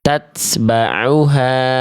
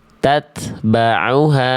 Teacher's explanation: Jadi bunyi ta-nya tanpa ada bunyi es. Ya, karena itu bukan, kalau bunyi es itu bukan perwujudan dari huruf ta sukun.